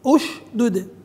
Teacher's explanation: همزه الوصل وهي داخله هنا على فعل وثالث الفعل مضموم كان الاولى ان تبدا بالضم كان الاولى ان تق راي اش دده وليس اش اش اش